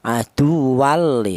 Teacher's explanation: cara bacanya tanwin ini dibaca tidak ada dengungnya ya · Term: idgham bila ghunah